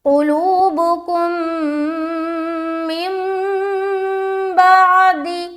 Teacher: تنوین یا نون ساکن کے بعد با آئے تو نون کو میم سے بدل کر، اس نون کو اس میم سے بدل کر غنہ اور اخفاء کے ساتھ پڑھا جاتا ہے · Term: اقلاب